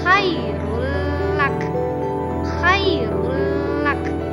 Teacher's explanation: bunyi nun mati atau tanwin dimasukkan kepada huruf setelahnya, lam atau ra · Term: idgham bila guna